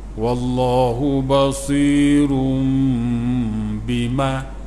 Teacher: daripada nun bertukar pada mim bersama dengung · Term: iklab